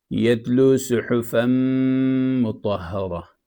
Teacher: یتلو صحفا مطہرہ، اس میں دیکھیں صحفا، فا پہ 2 زبر ہیں، تنوین ہیں، اور آگے میم آ رہا ہے حروف یرملون میں سے، تو اس میں ادغام ہوتا ہے، تنوین مدغم ہو گیا میم میں